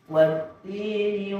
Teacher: Ketika huruf ta bertasydid maka aliran udara dan suara langsung tertutup. Jadi hilang lagi, tidak ada alirannya.